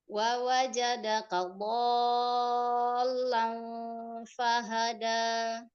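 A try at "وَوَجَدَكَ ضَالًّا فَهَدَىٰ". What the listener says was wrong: Nah, do 6 harokat ya. Do lang lang gitu ya. Dol gitu ya, agak diangkat karena dia bertasydid, Bun. Kurang panjang. Do 6 harokat matazim itu 6 harokat.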